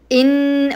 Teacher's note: مشدده تمسكين عليها بمقدار حركتين